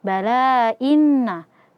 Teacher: nun yang bertasydid ghunah musyaddadah dibaca dua harakat